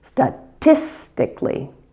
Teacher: The other issue I sometimes hear with this word is stressing the wrong syllable. The tis gets primary stress,